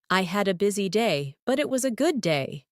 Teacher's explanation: Notice how your voice rises slightly at busy day and falls softly at good day. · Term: intonation